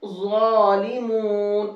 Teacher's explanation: ظا کو موٹا کر کے پڑھیں گے، زا کا ساؤنڈ نہیں آنا چاہیے، کیونکہ اکثر لوگ پڑھنے میں اس طرح سے پڑھتے ہیں ظالمون۔